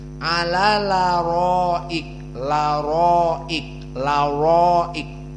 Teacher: Maka di sini naql. Maka hamzahnya dihilangkan, pindah fathahnya kepada lam jadi ala laroik